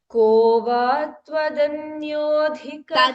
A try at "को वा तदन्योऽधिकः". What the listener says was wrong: तदन्योऽधिकः not त्व त को वा तदन्योऽधिकः